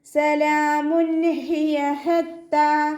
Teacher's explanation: ഹ തൊണ്ടയുടെ മധ്യഭാഗത്തു നിന്നാണ് വരുന്നത്, വസത്തുൽ ഹൽക്കിൽ നിന്നും അതിൻ്റെ സൗണ്ട് വ്യക്തമാക്കി കൊടുക്കുക. താഇൻ്റെ കൂടെ അലിഫ് സ്വഗൈറയുണ്ട്, പിന്നെ ഷദ്ദയും ഉണ്ട്, അപ്പോൾ നമ്മൾ 2 ഹർഫുകൾ ഉച്ചരിക്കുന്ന കനം കൊടുത്തിട്ട് 2 കൗണ്ട് നീട്ടിക്കൊടുക്കുക.